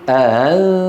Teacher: عدم قفل الوترين تماما، يتركون بين الوترين مجال ليمر الصوت، يتركون الوترين بعيدين قليلا عن بعضهما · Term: الهمزة المسهلة